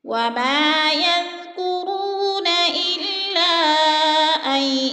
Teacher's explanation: حروف مدہ کے بعد حمزہ دوسرے کلمے میں ہے تو مد منفصل 4 الفی مد ہے. 4 الف کے برابر ہم نے اس کو کھینچ کر پڑھنا ہے.